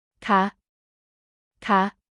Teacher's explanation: ca is used by women in questions and has a rising tone